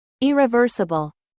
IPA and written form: ˌɪrɪˈvɜːrsəbl (IRREVERSIBLE)